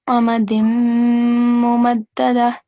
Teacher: it won't be amadin because we are joining din with mim mushaddad. So it will become amadim mumaddada.